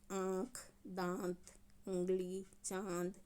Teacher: तो इसमें हमारा मुंह और नाक दोनों काम कर रहा है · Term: अनुनासिक